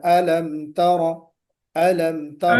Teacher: तरा को खींचना नहीं, जल्दी पढ़ना है